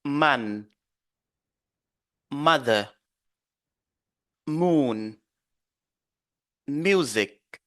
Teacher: fermer carrément les lèvres et puis le son va sortir par euh le nez